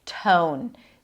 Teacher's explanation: The T is slightly aspirated.